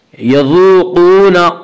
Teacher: قاف کو پر پڑھیں گے. قاف حروف مستعلیہ میں سے ہے.